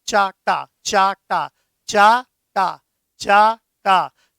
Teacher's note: जब आप च बोलेंगे तो कुछ नीचे जीभ लगती है, और जब ट बोलेंगे तो जीभ ऊंचाई पे पहुंच जाती है।